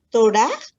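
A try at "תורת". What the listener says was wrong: Te faltó la T al final.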